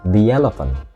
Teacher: bunyi kuatnya adalah the ketika biasanya diikuti kata yang datang setelahnya itu diikuti dengan suara vokal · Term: bentuk kuat